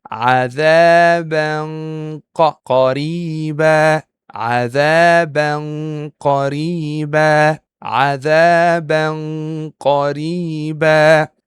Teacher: I'm starting to hide the Tanween and I'm letting my mouth takes the shape of pronouncing the letter Qaf already.